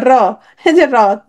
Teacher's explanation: কম্পিত হয়েছে। তাহলে র উচ্চারণের সময় তোমার কি হয়? জিভের আগা কিছুটা কম্পিত হয় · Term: কম্পনজাত ধ্বনি